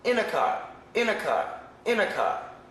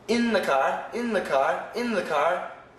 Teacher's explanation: in a car there's only one n Sound in the car there's two n sounds